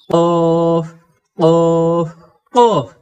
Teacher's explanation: যে কফ অক্ষর জিহবার গোড়া থেকে কাকের আওয়াজের মত মোটা করে পড়তে হয়। · তারপরে কাফের মাখরাজ কি? কাফ অক্ষরকে জিহবার গোড়ার একটু উপর থেকে সিকন করে পড়তে হয়।